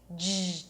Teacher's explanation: And one last tip, instead of starting with an L sound, start with a G sound. G, to make the sound the tongue touches the upper palate and you hear these vibrations. G, so as you pronounce the G, pull the tongue in.